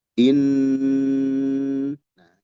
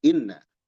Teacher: Dia dibaca mendengung dan ditahan. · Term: gunah